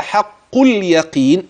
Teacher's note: أخلي بالي من كلمة حق، الحاء ترقق، القاف تفخم، كلمة اليقين القاف عندي مكسورة، وخلي بالك من كسرتها حتى لا تتحول إلى حرف آخر.